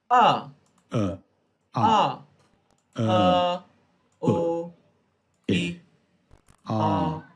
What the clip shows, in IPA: ə ʌ ɜ: ʊ ɪ a: